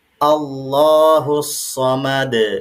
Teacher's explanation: Kemudian ya sama seperti di ayat yang pertama, ya di sini dalnya karena dia waqaf maka dalnya sukun dan harus dipantulkan.